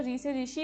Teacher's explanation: मूर्धन्य स्वर, जो री से ऋषि वाला है, जीभ की नोक और तालु के बीच में इसको यूज़ करा जाता है